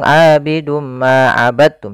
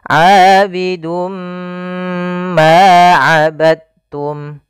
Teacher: kita masukkan tanwinnya kepada huruf mim, kemudian ditahan. Abidum ma, tahan ma, baru dilepas. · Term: idgham bi gunnah